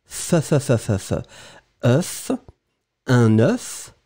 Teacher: le singulier, vous allez prononcer « œuf », et vous prononcez vraiment le F final